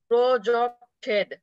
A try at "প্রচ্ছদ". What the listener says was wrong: একারটা হবে না, একারটা হবে না, প্রযোগ সদ, প্রচ্ছদ।